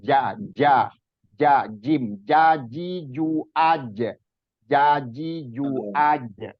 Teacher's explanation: huruf Jim itu makhrajnya ada di tengah-tengah lidah